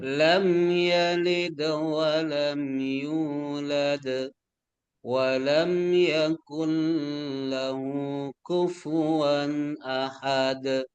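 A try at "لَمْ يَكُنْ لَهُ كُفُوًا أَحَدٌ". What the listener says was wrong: Yakullahu itu tidak boleh terlalu lama karena dia bukan bigunnah tapi bila gunnah. Satu harokat boleh. Yakul tapi gak ada dengungnya. Langsung ke dalam lam. Yakullahu kufuwan ahad.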